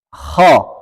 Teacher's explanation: Jadi yang membuat tebal huruf kho adalah terangkatnya pangkal dan bibir tidak ada pengaruhnya.